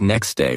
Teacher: next day often sounds like next day without the t sound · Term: dropped sounds